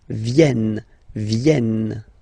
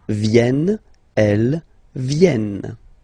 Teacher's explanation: this classic ending ent for the third person of the plural is here but phonetically doesn't exist. So you don't pronounce it vi vi.